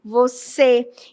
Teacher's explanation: Você não fala com o som aberto, você fala com o som fechado. Então, circunflexo, beleza?